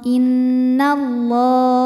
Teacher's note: lam jalalah dibunyikan secara tafkhim karena didahului harakat fathah maka ini bunyinya tebal